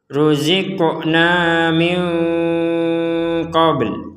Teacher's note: ruziqna qafnya di sini kita baca dipantulkan atau dimentalkan. Jadi tidak sekedar ruzikna, kurang, harus ada pentalan.